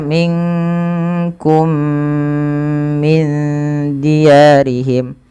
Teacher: Kemudian ketika minkum min diyarihim ada mim mati bertemu dengan mim serupa, maka ini yang kita namakan dengan bacaan idgham mimi, yaitu memasukkan mim kepada mim lainnya